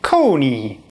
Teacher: They're pretty round when you say the O, and pretty flat when you say the E.